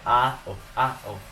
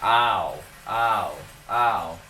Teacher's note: Et le deuxième, c'est juste que le son est exactement le même, mais c'est le A son qui est différent et A l'accent et la position de langue est plutôt bas et vraiment notre bouche est vraiment ouverte et notre prononciation est A, O, A, O. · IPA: /aʊ/